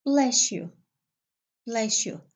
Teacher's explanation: the se will be changed into she. Okay? So, se plus ye equals she.